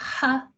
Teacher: H is also, it's a glottal fricative. In that when we say h, there's no stopping of the sound. It's a continuous long sound, but it's made from behind the back of our tongue.